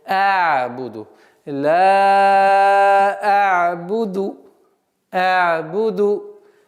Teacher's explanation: Гортанный звук «айн» нельзя резко произносить.